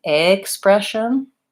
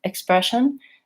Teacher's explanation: If I say expression and I use the A vowel, but it's very light and reduced, you're not going to really hear the difference.